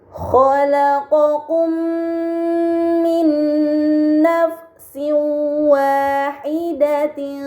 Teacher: mim sukun dibaca secara melebur dengan gunnah yang dipanjangkan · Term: idgham mimi